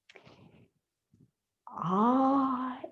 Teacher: ah is the most open vowel